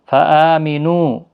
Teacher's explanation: حمزہ کے اوپر کھڑی زبر ہے، 1 الف کی مقدار کے برابر کھینچ کر پڑھیں گے